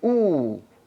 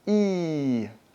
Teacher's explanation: So E, the tongue is really far forward. When you say ooh, think about your tongue and it's actually quite a bit farther back in your mouth.